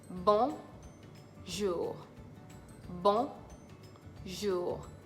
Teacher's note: It has a nasal sound between the O and the N.